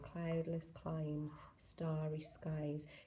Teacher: It's not a harsh sibilant S, it's a gentle S. He also uses assonance, cloudless, climes, starry, skies, and which sort of draws the line out.